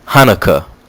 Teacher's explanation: And in Hebrew and Arabic pronunciation and transliteration conventions, it says this about the H. A guttural sound made deep in the throat. To Western ears, it may sound like the CH in lock.